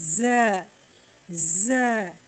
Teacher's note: जबान की नोक नीचे वाले दांतों के अंदरूनी हिस्से से मिलकर ज की अदायगी होती है